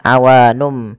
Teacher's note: Nun diganti dengan mim karena dia bacaan iqlab yaitu nunnya bertemu dengan huruf ba awalnya awun menjadi awanum maka di sini m itu dianggap mati